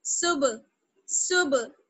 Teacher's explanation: دونوں ہونٹ جو ہیں آپ کے، دونوں لپس جو ہیں وہ ٹچ ہو کر دونوں بالکل الگ ہو جائیں گے